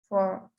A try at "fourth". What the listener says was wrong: So you pronounce it fourth. As you can see, you have the T and the H at the end. So the T and the H is with the tongue under your teeth. So you say fourth, fourth, fourth.